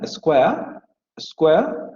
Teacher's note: La palabra near se va a pronunciar con la vocal central semiabierta no labializada. Y la palabra square se va a pronunciar con un diptongo, con estas dos vocales, con la vocal semicerrada anterior no labializada y la vocal media, square, square, como lo hemos visto hasta ahora, o con la vocal semiabierta anterior no labializada alargada, square, square o square, square.